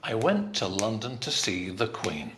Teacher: the prepositions the articles not so stressed they're not important